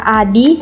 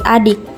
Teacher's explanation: G pada posisi Akhir kata menjadi Inang ada kata Adi yang mengalami proses penambahan bunyi k pada posisi Akhir kata menjadi adik selanjutnya metatesis metatesis adalah perubahan urutan bunyi fonemis pada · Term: paragong